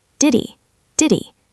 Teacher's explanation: We have the D in did and the H in he. We drop the H and the D connects to the E.